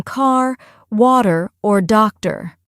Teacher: And don't forget about the R sounds. They're much stronger and more pronounced in American English